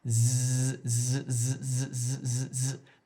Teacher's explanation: If you're doing the z sound correctly, if you put your hand on your throat, you can feel it vibrating. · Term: voiced